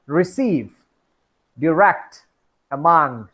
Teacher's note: the stress is on the second syllables